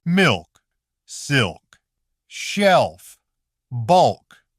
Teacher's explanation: In words like these, the L still stays relatively clear.